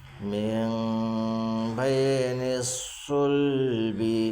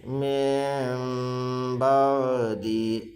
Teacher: نون کو میم سے بدل کر گنہ اخفا کے ساتھ پڑھیں گے، اس کو اقلاب کہتے ہیں۔